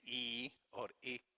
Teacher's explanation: or rounded or unrounded when we say e or e so we spread our lips we don't round them and we also want to see if the vowel is short